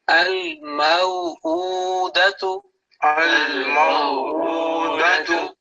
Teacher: this Hamza has an inverted dhamma. It's basically like a waw madda, okay, in shortened form. So it should be given double time as compared to 3 basic strokes.